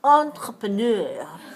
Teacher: in english we say n but in french you don't say n you say oh